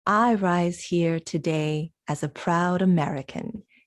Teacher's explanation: he's stressing everything he can possibly stress